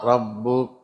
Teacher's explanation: ரப்புக ராவுக்கு ஃபத்தஹ் இருக்கிறதுனால தஃபீமாக ஓதணும்.